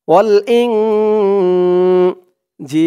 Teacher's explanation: জি বলে এক আলিফ টান দিয়ে এই লামকে ধরবে, লামের উপরে জবরটা সাকিন হয়ে যাবে, অক্ফা করার কারণে 3 আলিফ টান মধ্যে আরজি।